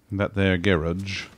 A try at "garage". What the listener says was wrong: The humor is that you're putting the wrong emphasis on the wrong syllable.